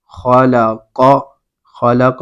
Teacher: ان حروف کو ہمیشہ پر یعنی موٹا کر کے پڑھتے ہیں، جیسے خلق، خلق میں خا اور قاف یہ حروف مستعلیہ میں سے ہیں، تو ان کو پر کر کے پڑھیں گے